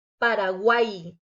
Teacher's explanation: vamos a notar que al final de la palabra a pesar de ser una consonante el sonido es como si fuera de una y latina